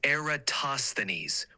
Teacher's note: with the emphasis on the third syllable